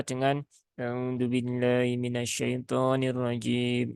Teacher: Nah itu bergumam namanya eh vokalnya tidak jelas vokalnya tidak tertunaikan